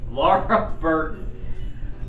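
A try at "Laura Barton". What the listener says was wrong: Barton. It's Barton, not Burton.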